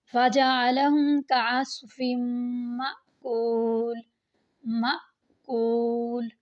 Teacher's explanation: میم کو تھوڑا سا جھٹکا دے کر پڑھتے ہیں، معقول نہیں پڑھتے۔ اور کچھ لوگوں کو لگتا ہے کہ ہم خالی میم زبر کو ہی پڑھتے ہیں، ایسا نہیں ہے، ہم میم اور حمزہ ساکنہ کو ملا کر پڑھتے ہیں۔